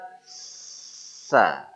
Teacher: antara ujung lidah dengan ujung gigi seri berhampiran mendekat tidak nolol begitu tapi dia mendekat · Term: huruf tsa